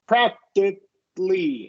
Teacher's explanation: you're basically using a stop K sound for that C, right?